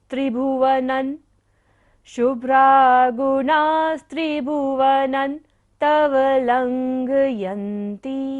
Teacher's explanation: बिंदी के बाद क्या है, त वर्ग है तो बिंदी को उच्चारण क्या होगा, न